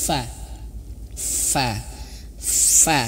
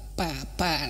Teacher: bukan dua bibir berjumpa